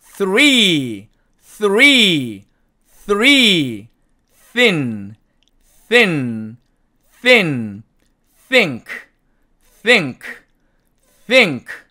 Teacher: 그래서 이 번데기 같이 생긴 발음기호의 정확한 음값은 어떻게 되냐면 이렇게 됩니다. 즉 바람 새는 소리만 나와야 돼요. 뜨 그러면 안 된다는 얘기죠.